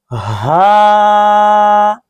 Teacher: हलक के आखिर जो सीने की तरफ है वहां से यह हा अदा होता है जिस तरह इंसान तकलीफ में होता है उस वत आवाज निकलती · حلق کے آخر جو سینے کی طرف ہے وہاں سے یہ ہا ادا ہوتا ہے. جس طرح انسان تکلیف میں ہوتا ہے اس وقت آواز نکلتی ہے ہا، اس طرح ہا ادا ہوگا.